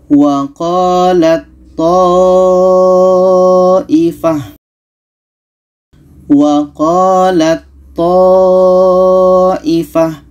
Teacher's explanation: maka Ta ini kita masukkan ke th · makhrajnya sama-sama ujung lidah bertemu dengan pangkal gigi di atas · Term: Idam mutajanisen